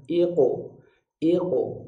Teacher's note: Q ini bunyi qalqalahnya adalah bunyi Qalqalah tebal